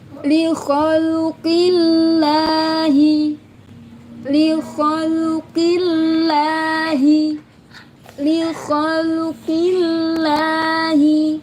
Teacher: Ingat dibaca tipis karena Allahnya jatuh setelah harokat kasrah.